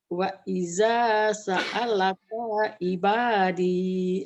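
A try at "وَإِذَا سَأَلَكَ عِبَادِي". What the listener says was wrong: Kayaknya pendek ya, Bu ya. Itu udah bagus, cuman seninya belum dapat. Wa idza sa'alaka ibadi.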